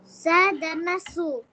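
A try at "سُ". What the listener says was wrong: No no this is সিন। সিন দাম্মা সু।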